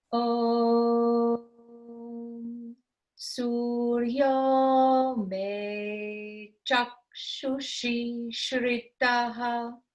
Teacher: Sur is the same note as Om